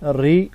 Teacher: را کے نیچے زیر ہے، را کو باریک کر کے پڑھیں گے